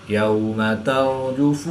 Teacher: रा मुशद्दिद पर ज़बर है, तो रा को पुर यानी मोटा पढ़ेंगे।